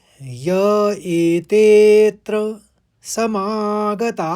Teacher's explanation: ता में आ की मात्रा के साथ विसर्ग है तो हा पढ़ेंगे आखरी में हा